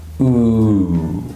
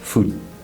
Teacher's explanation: This word has a long vowel, oo. It has two sounds because there's a W sound at the end, ooh. But Spanish speakers often pronounce this word without the W sound.